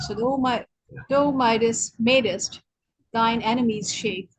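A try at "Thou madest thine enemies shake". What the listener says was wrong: Thou, not though, thou.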